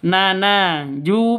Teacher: Ju sama na itu sama-sama mad asli panjangnya sama-sama dua ketukan